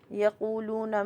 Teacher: یقولون میں دیکھیے واو ساکن سے پہلے پیش ہے تو یہ مد بالواو ہے. واو ساکن سے پہلے پیش ہے، مد بالواو 2 کاؤنٹ ہوتا ہے